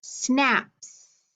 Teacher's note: remember it's unvoiced because the s does not make our vocal chords vibrate as much